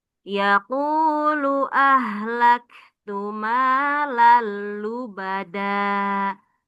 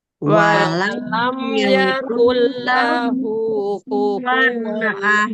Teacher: Nah, langsung dilebur tanpa ada dengung ya cara bacanya. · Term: idgham bila guna